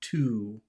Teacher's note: if you say the word to when it's alone it's long